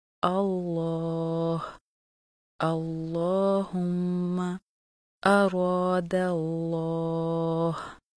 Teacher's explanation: لفظ جلالہ اللہ کے لام سے پہلے زبر یا پیش ہو تو لفظ جلالہ اللہ کے دونوں لام ہمیشہ خوب موٹے پڑھے جاتے ہیں، جیسے اللہ، اللہم، اراد اللہ۔